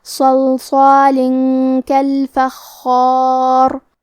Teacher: کلمت صلصال میں دونوں صاد کو تفخیم سے پڑھیں گے کیونکہ یہاں لام ساکن ہے تو ہمیں لام کو ظاہر کرنا ہے.